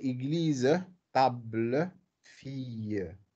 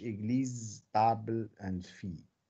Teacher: in spoken French or colloquial French, in general, this schwa is deleted. · in formal French, normally we pronounce the word always with the presence of a schwa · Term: apocope